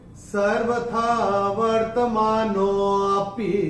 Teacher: तो इसमें नो को थोड़ा सा खींच के बोलना पड़ेगा। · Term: अवग्रह